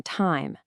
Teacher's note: Take I, as in time. Notice how your starting position is way more open, and your mouth has to traverse a significantly wider physical space to reach that closed ending position. It's a much broader, sweeping movement. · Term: wide closing diphthong